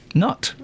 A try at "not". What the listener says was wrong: You're saying nut. You know that, don't you?